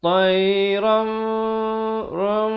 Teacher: Ditukarkan bunyi nun kepada bunyi mim. Bibir itu sekadar bersentuhan saja dua harakat. Tayram ram, ataupun hampir bersentuhan. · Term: iqlab